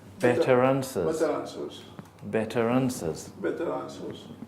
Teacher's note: The R may effectively move on to the beginning of the next word.